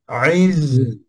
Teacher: Ha sini ada safir. Ada safir iaitu berdesir pada izza. Iz itu safir.